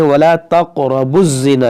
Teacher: یہ با کو زا سے ملا دیں گے